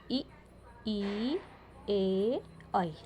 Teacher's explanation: इसमें केवल हमारे जीभ का आगे वाला भाग ही प्रयोग हुआ है। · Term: अग्र स्वर